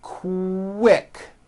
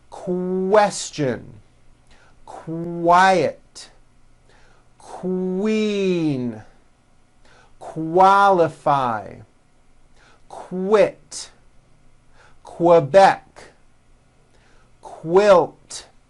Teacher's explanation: the word quick is pronounced with a k and a strong W sound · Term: Q sounds